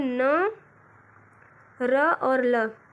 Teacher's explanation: इनका उच्चारण करने के लिए जिह्वा ऊपरी मसूड़ों को स्पर्श करती है, इसीलिए इसको वर्ष व्यंजन के नाम से जाना जाता है। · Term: वर्च्य व्यंजन